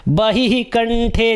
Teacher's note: दोनों का उच्चारण ह ही होगा, क्योंकि विसर्ग का उच्चारण भी ह होता है और ह का उच्चारण तो ह होगा ही।